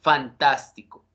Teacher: Fantástico tiene acento en la sílaba antepenúltima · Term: esdrújulas